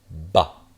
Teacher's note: because it's a stop, your lips are going to come shut